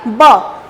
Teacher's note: ब बोलते समय दोनों ओष्ठ छूती है एक दूसरे को, दोनों होठ छूती है, तो ब स्पर्श किया, टच किया, ब।